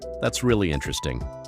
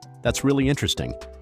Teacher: With the voice rising on really, falling on interesting, suddenly it sounds genuine, engaged, like you actually mean it.